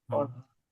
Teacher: જ્યાં અનુનાસિક દેખાય છે ને, એને આપણે અનુનાસિકનું ઉચ્ચારણ નહીં કરીએ, ખાલી પણ કરીશું.